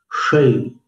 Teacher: जा करके तालु पर दबाव देते हुए शे, और फिर शै, जीभ को ऊपर ले जाकर सिर की तरफ शै, मूर्धन्य श का उच्चारण